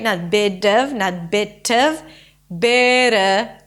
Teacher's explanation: the T in the bit turns into a flap T